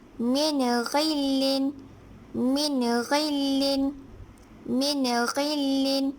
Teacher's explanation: apabila nun mati bertemu dengan huruf ghin, maka ia dibaca jelas